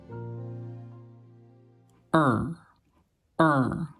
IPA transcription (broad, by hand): ə˞